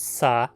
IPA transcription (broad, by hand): sa